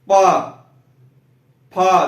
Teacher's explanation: पा फा, देखिए ओठ हर बार बंद हो रहा है, खुल रहा है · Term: ओष्ठ